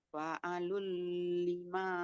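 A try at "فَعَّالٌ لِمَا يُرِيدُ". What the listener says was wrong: Tasydid. Fa'alun. Fa'alun.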